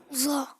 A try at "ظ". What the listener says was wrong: زوا نہیں کریں گے, اوپر زبان لگا کے وا.